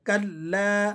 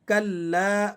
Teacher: यह लाम सिर्फ एक अलिफ के बराबर खींचा जाएगा क्योंकि लाम उनके बाद अलिफ है।